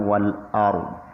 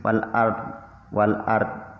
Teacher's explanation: Gak boleh dibaca tipis, wal ard. Salah kalau dibaca tipis, tapi harus dibaca tebal karena tafkhim.